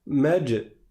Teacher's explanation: j'ai fait une qalqalah sur le jim, c'est-à-dire que j'ai laissé rebondir, malgré le soukoun qui est là, j'ai laissé rebondir le son après le soukoun.